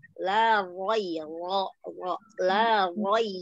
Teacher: Ro-nya pangkal lidah angkat. La roi. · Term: tebel